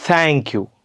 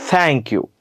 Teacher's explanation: वरचे दात जिबीवर ठेवून देऊ आणि मग त्याचा उच्चार करू